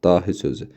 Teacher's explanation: Dahidə uzanma var. A uzanır